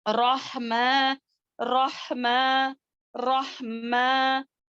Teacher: اچھے سے ہا جو ہے پڑھتے ہوئے ہماری سانس باہر کی طرف جانی ہے, ہوا جو ہے منہ سے باہر کی طرف جانی ہے